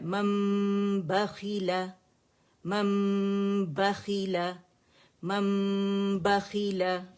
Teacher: اب کیونکہ نون کو میم سے بدل دیا، اب میم کو اس کے بعد ہم کیا کرتے ہیں، چھپا دیتے ہیں. ٹھیک ہے، دونوں ہونٹوں کے جو خشک حصے ہیں انہیں نرمی سے ملاتے ہیں اور کاملہ گریڈ کا غنہ کرتے ہیں